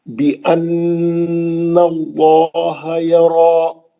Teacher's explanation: بِأَنَّ اللَّهَ يَرَى، بِأَنَّ نون پہ غنہ ہے، نون مشدد ہے، اچھا غنہ کریں گے. ناک کے بانسے میں آواز لا کے خوبصورت غنہ کریں گے.